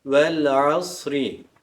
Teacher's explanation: edilmesine sebep olan harflerden a harfi geldiği için izharı kameri olur lam harfi açık bir şekilde İzhar okunur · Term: izhar-ı kameriyye